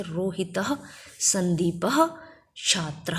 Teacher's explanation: विसर्ग का जो उच्चारण होगा वो ह उच्चारण में होगा · अनुस्वार का उच्चारण स्थान नाक होता है, नाक से बोला जाता है, और विसर्ग का उच्चारण स्थान हमारा कंठ से होता है, क्योंकि ये हा की भांति बोला जाता है।